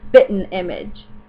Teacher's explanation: we tend to not do the G